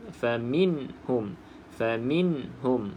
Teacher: Pastikan tidak ada lantunan pada huruf nun yang sukun ini. Dan kita nampak mim yang bersabdu macam biasalah.